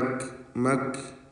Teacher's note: മഹ്മൂസും ഷദീദുമായ അക്ഷരമാണ് കാഫ്, നമുക്കറിയാം. ഹംസ്, ഷിദ്ദ തുടങ്ങിയ സിഫത്തുകൾ സംഗമിക്കുന്ന ഒരക്ഷരം കൂടിയാണ് കാഫ്. അത് മക് മക് എന്നുള്ള ആ ശബ്ദം തന്നെ അതിന് നൽകണം. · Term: കാഫ് സാക്കിനത്താണ്